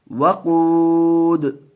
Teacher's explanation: وقف کرتے وقت تھوڑا سا کھینچ کر کے وقف کریں گے، اور یہاں جو ساکن کریں گے صرف دال کی آواز آئے گی، حرکت کی نہیں